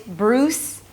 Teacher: And then it's a /t/ sound and an 'uh' (schwa). But since the T is in between two vowels it's a flap T